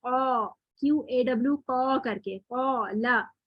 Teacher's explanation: الف اس وقت موٹا حرف ہے کیونکہ اس سے پہلے حرف موٹا آ رہا ہے. تو اس کو ابھی ہم موٹا ہی ساؤنڈ کریں گے تو آواز آئے گی قا QAW قا کر کے قالا. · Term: الف بھی موٹا